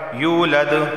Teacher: لم یلد، دال حروف قلقلہ میں سے ہے، یہاں بھی آواز مخرج سے ٹکرائے گی، لم یلد ولم یولد، واو سے پہلے پیش ہے ایک الف کے برابر، اسے کھینچ کر پڑھا جائے گا